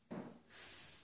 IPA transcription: θ